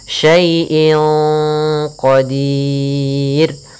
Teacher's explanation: Cara membacanya samarkan kepada qaf, dan qaf termasuk huruf tebal, maka ikhfanya agak ditebalkan